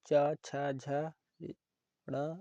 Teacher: ऐसे वर्ण जिनके उच्चारण में जीवा तलु को स्पर्श करती है उन्हें तालु वर्ण कहते हैं।